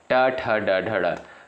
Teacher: ट वर्ग के अंतर्गत जो भी वर्ण आते हैं उनका उच्चारण स्थान मूर्ध से होता है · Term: मूर्धन्य वर्ग